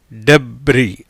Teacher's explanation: எஸ்ஸுக்கு உச்சரிப்பு கிடையாது, அதனால் இது என்னது? டெப்ரி அப்படிங்கிற ஓசையில் உச்சரிப்பில் வருது.